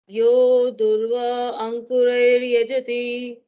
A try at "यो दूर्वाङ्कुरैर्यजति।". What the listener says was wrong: नहीं, अगर आप दूर्वा अंकुर करेंगे तो फिर दूर्व अंकुर बोलना पड़ेगा, क्योंकि फिर आ उसमें से निकालना पड़ेगा। इसलिए एक साथ कर दो।